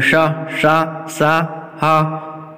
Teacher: ये चारों वर्ण का जब उच्चारण करेंगे तो गर्म सांस निकलेगी, इसलिए इन्हें ऊष्म व्यंजन कहते हैं